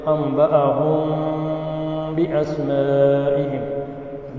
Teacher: میم ساکن کے بعد جو با ہے اس وجہ سے اخفاء مع الغنہ ہوگا